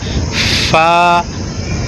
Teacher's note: ہاں، پا نہیں پڑھنا، پا نہیں پڑھنا، بلکہ اوپر کے دانت، یہ جو اوپر کے دو دانت ہیں، یہ یہاں پہ ہونٹ کے ساتھ ٹکرائیں گے اور یہاں سے فا ادا ہوگا.